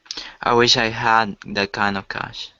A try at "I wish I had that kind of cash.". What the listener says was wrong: We'd actually emphasize I in this case because it's really important. It's just an important word in the sentence.